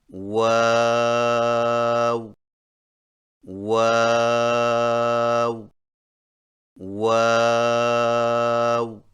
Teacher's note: واؤ کی ادائیگی میں ہونٹوں کو گول کرتے ہوئے اوپر کی جانب کھول کر درمیانی سی مد کریں اور پھر سے ہونٹوں کو چونچ کی مانند گول کرتے ہوئے باریک آواز میں پڑھیں، یعنی واو واو واو۔